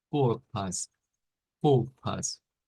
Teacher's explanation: Que decíamos que es como hacer una E, pero con los labios redondeados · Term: la E redonda